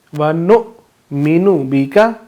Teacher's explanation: حمزہ کے اوپر جزم ہے تو ہم اس کو جھٹکا دے کر پڑھیں گے